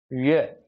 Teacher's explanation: ये का उच्चारण करेंगे तो आपकी जो जीभ है वो तालु को स्पर्श करेगी या तालु की ओर जाएगी। जब आप ये का उच्चारण करेंगे ये, तो ये तालव्य है और ये उच्चारण स्थान इसका तालु है।